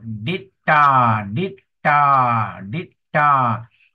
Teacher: And then the dot below, ditta, ditta, ditta. Emphasis on the aspirated T.